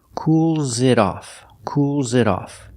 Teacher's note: You hear the S in cools is pronounced with a zebra sound. Z. Together.